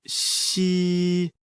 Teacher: like the English word she, but with the tongue touching slightly the bottom teeth. The pronunciation is assisted by the teeth.